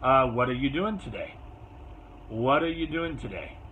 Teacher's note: So what are you doing today? Your most important word is day.